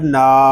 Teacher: نون کو ہم ایک الف تک کھینچ کر پڑھیں گے کیونکہ یہاں پہ الف مدہ ہو رہا ہے